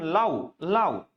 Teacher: এই প্রথম বর্ণটা, প্রথম স্বরটা সম্পূর্ণ উচ্চারিত হয়, কিন্তু দ্বিতীয় যে স্বরটা আছে এই স্বরটা সম্পূর্ণ উচ্চারণ হয় না। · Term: যৌগিক স্বর